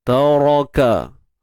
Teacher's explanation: ra kita tebalkan tuan-tuan puan, ra baris atas